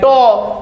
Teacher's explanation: जब बोलते हैं टो तो ये मूर्धा से बोला जाता है।